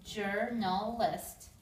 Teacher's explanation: this l sound sounds like it carries over as if there's two L's there